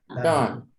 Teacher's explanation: Esse O puxando para o A